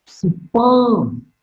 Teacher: Exclamatory sign. Superb is marked with a falling tone.